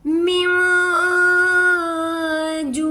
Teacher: नून पर हम इख्फा करेंगे, छुपा हुआ गुन्ना करेंगे। नेक्स्ट वर्ड जीम है, जीम हरूफ इख्फा में शामिल है, इसलिए हम यहाँ पर पूरा छुपा हुआ गुन्ना करेंगे।